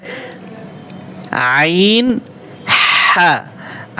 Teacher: কন্ঠনালীর মধ্যখান হতে দুইটি হরফ উচ্চারিত হয়